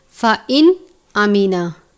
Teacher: نون ساکن کے بعد حمزہ ہے، حروف حلقی میں سے اظہار کا قاعدہ لگتا ہے، یعنی نون ساکن پر غنہ نہیں کریں گے، اس کو ہم اس طرح سے پڑھیں گے فَإِنْ آمینہ بغیر غنہ کیے۔